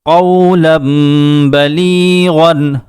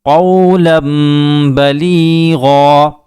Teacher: رکیں گے تو ایک زبر کو ختم کر دیں گے